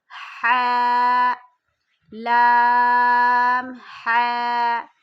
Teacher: حاء حلق سے نکالیں گے، یہ حروف حلقی میں سے ہے، حلق کے درمیانے حصے سے ادا ہوگا